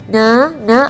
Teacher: Jadi kalau kita melafalkan huruf nun, kita perhatikan na, ada getaran di bagian rongga hidung. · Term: sifat gunnah